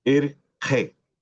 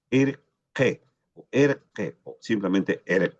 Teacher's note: Esta esta i se abre mucho más como la e.